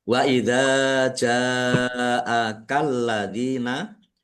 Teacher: karena bertemu dengan huruf hamzah dalam satu kata maka menjadi mat wajib muttasil. Baca panjang 5 harokat. Alladzina lamnya dibaca double ada tasdidnya.